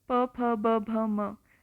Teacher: आपके जो दोनों होंठ हैं वो आपस में एक दूसरे को टच करेंगे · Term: ओष्ठ्य